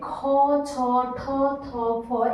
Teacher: এগুলো উচ্চারণ করার সময় আমাদের কিন্তু অনেকটা বেশি বায়ুর প্রয়োজন হয়, তাই এগুলো আমরা বলবো মহাপ্রাণ